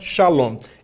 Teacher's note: Olha aí o O longuíssimo no hebraico